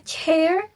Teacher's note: Avcates merupakan gabungan antara stop sound dan sound. Bunyi ini dimulai dengan menghentikan udara. Kemudian dilepaskan dengan suara gesekan. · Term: avicates